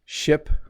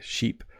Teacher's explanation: Ship, it's a very fast word, whereas sheep has a very long vowel.